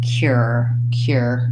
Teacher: for most speakers of American English we go right into the ER sound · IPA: ɚ